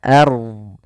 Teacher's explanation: pada lafal ard di sini ro-nya dibaca tebal, jangan ard, tapi dia ard.